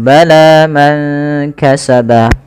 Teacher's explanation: panjangkan huruf lanya sepanjang dua harakat karena La Di sini ada Alif kecil yang datang setelahnya dan